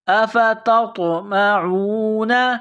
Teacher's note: طوا ساکن ہے، یہاں پر قلقلہ کریں گے۔ · یہ نقطوں والی تا ہے، اس کو باریک کرنا ہے، نقطوں والی تا کو طوا کے ساتھ ملانا ہے، پلس کرنا ہے۔